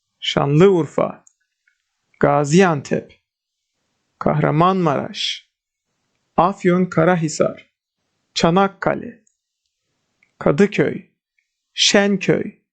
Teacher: the first word and the second syllable of the first word is stressed in geographical names. Even when they combine together, we apply the rule as here.